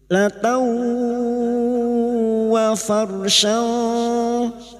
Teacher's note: fathatain bertemu wawu idgham bigunah, masuk dengan mendengung, masuk pada huruf berikutnya dan mendengung selama 3 harokat